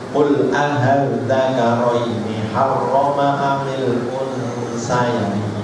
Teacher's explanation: maka bisa dibaca tasjil antara alif dengan hamzah. A dan A, antara A dan A jadinya aha. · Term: bacaan tasjil